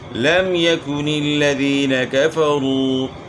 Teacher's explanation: میم ساکن کے بعد نہ دوسرا میم ہے نہ با ہے، تو اس لیے اس میں اظہار ہوگا، غنہ نہیں ہوگا · یا مدہ ہے، کھینچیں گے تھوڑا، کفروا واو مدہ ہے، اس کو بھی تھوڑا کھینچیں گے